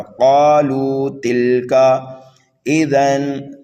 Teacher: تنوین کے بعد میں کاف آ رہا ہے حروف اخفا میں سے، اس لیے یہاں پر اخفا کر کے پڑھیں گے